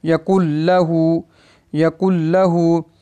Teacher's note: लाम जो है वो उसमें इदगाम तो होगा लेकिन ये गुन्ने के बगैर पढ़ा जाएगा